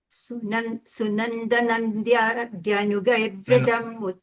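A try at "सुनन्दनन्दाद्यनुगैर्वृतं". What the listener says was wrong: No, you are saying Nandya. You are saying it's Nandadhya Nugair. Yeah, correct.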